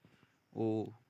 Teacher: ओ का उच्चारण स्थान कौन सा होता है, ओ। कंठ और ओष्ठ होना चाहिए दोस्तों